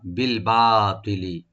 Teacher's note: বি বলবো আর বা open করে একালিপ টানবো। ত এটা তা যেন না হয়, তটাকে রাইট দেবো।